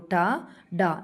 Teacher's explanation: నాలుక కొనను పైకి ముడిచి ఉచ్చరిస్తాము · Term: మూర్ధన్యాలు